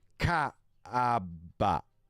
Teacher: AB is pronounced with a slight pause between the A and the B. Ka-a-ba. And the B is pronounced similar to the English B, but with a burst of air.